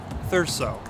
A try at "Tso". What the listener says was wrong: It almost made the S sound like a Z.